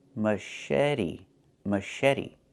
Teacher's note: The ch makes a soft shh sound like in fish.